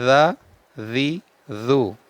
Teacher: जाल को बगैर सीटी के पढ़ना है जी जू जबान की नोक और ऊपर के दांतों के अंदरूनी